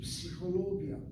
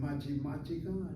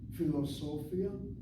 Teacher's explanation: So a 5-syllable word, the middle of the word seems to get the emphasis.